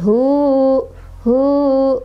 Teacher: Artinya ini adalah madsilah qosiroh. Kita bacanya cukup dua harokat saja ya, dipanjangkan dua harokat.